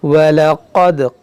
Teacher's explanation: क़ाफ मोटा करें, दाल में कलकला करें